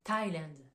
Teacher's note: c'est la partie exception où on prononce pas le TH